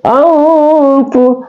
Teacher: Ikhfa hakiki, hukum bacaannya itu dibaca berdengung ya, berdengung seakan-akan matinya ng bukan n ya